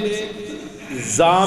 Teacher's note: زا میں سیٹی کی آواز لیکن آواز کو سخت کر دیا دیکھنا زا سیٹی کے بعد کا آواز سخت ہے سین میں